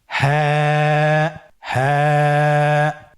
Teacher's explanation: হাফটি উচ্চারণের স্থান কন্ঠনালীর শুরু হতে অথবা আমরা যদি আরবিতে বলি হলকের শুরু হতে এটা এই হরফটি উচ্চারিত হয়। কন্ঠনালীর শুরু থেকে উচ্চারণ করুন হা।